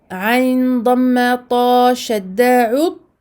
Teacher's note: Je ne fais pas de qalqala. Donc, je bloque et je me place dans le point de sortie du ta et j'y reste jusqu'au moment où je donne au ta sa voyelle.